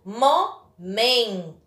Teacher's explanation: Então, contando de trás para frente, última, penúltima. Então, a penúltima sílaba da palavra momento é a mais forte.